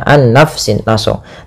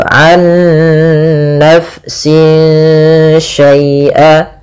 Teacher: Nah, ada bacaan idgham bi gunnah, yang dimana dia di sini kita harus membacanya nunnya masukkan ke nun kedua dan disertai dengan gunnah.